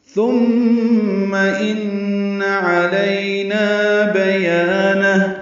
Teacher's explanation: بیانہ میں یا الف مدہ ہے، یہ بھی 2 حرکات لمبا